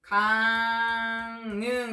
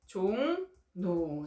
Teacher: 비음이 아닌 리을이 비음인 이응과 만나서 비음인 니은으로 바뀌고 있네요. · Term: 비음화